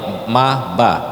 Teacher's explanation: ketika kita nyebut Ma dan ba membutuhkan dua bibir yang saling rapat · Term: huruf syafawi